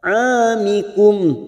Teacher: ain di sini fathah diikuti alif 2 harokat